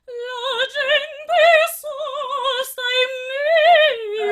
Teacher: You can actually put a little bit of extra M to mira, the famous raddoppiamento sintattico that we spoke already a few times, and it gives that extra to the word.